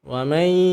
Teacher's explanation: dengungkan huruf nun lebur ke dalam huruf ya.